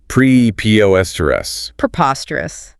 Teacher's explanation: Stress on the second syllable. That last teresa's bit is a schwa sound.